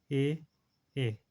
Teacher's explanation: ये देखो जीभ जब आप बोलोगे तो जीभ के अगले हिस्से एकदम देखो एकदम आगे वाले हिस्से से बोला जा रहा है, तो इसलिए इसे अग्र स्वर बोलते हैं।